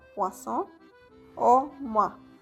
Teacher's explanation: la conjugación OI, que va a pronunciarse como si fuera una U con una A